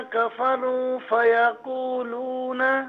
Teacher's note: اب اس سے پہلے آپ نے یہ مسٹیک کی تھی کہ فیقولون، یہاں قو اور لو دونوں کو ایک الف کی مقدار کھینچنا تھا، آپ نے نہیں کھینچا.